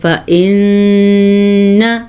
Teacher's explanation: فَإِنَّ نون کو شد ہونے کی وجہ سے غنّے کے ساتھ پڑھیں گے